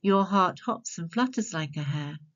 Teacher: note the breathy H alliteration which creates a sense of being awestruck in the very next